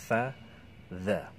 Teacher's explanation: Di ujung lidah bertemu dengan ujung gigi seri, menempel dengan ujung gigi seri bagian atas, sama makhrajnya dengan huruf sa ini ya. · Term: huruf dzal